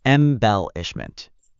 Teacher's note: Try emphasizing the second syllable a little more.